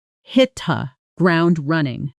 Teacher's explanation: ground running flows together smoothly, almost like one long word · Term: connected speech